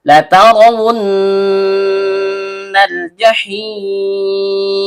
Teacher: Lam ujung lidah bertemu dengan langit-langit bagian depan. · Karena ro-nya berharokat fathah, maka hukum bacaannya tebal atau tabkhim.